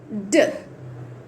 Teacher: your tongue should touch the అల్వియో alveolar రేజ్ అంటే పైన ఉంటుంది కదా దాన్ని అల్వియోలార్ రేజ్ అంటారు దాన్ని టచ్ అవ్వాలన్నమాట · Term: డ సౌండ్